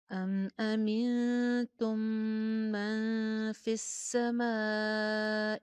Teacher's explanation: زبر یعنی کہ جو حمزہ کے اوپر زبر ہے وہ شو نہیں کرنی, زیر کا خیال رکھنا ہے. تم کے اوپر تا کی پیش پہ ہونٹ آپ کے میکسیمم گول ہوں گے. ام امنتم من فی السماء, سین کا مخرج کا خیال رکھیے, فا کے نیچے زیر ہے.